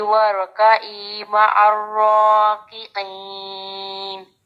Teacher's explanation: وہ آ کا جو عین ہے وہ سٹارٹنگ میں پہلے حمزہ کی آواز دیتا ہے، بعد میں عین پڑھا جاتا ہے